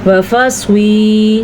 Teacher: سواد کو پر پڑھیں گے اور کھینچ کے پڑھیں گے کیونکہ آگے یا مدہ آ گیا ہے۔